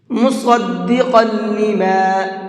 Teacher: صاد کو بھی اور قاف کو بھی دونوں حرفوں کو پر کر کے پڑھیں گے، منہ بھر کے پڑھیں گے